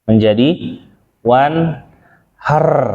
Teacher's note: takrir itu intinya bukan di getarnya, tapi getaran yang lembutnya, di situ intinya.